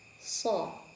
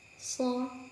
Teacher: So sama dengan po, pangkal lidahnya dinaikkan karena dia mempunyai sifat isti'la, menaikkan pangkal lidah.